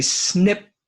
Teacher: Sometimes we don't finish the P because it's at the end of the word and we say snip.